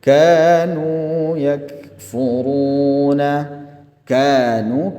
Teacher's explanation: kanya panjang dua harakat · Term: mad tabi'i